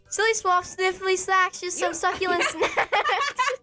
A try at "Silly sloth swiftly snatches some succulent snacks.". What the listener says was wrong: You were gone as swiftly. You said sniffly. Sniffly?